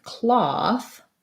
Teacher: in the word cloth, ah, we actually have an ah vowel. So it's rounded, but it's not an O.